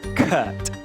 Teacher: O nome técnico dele é vogal semibaixa central não arredondada.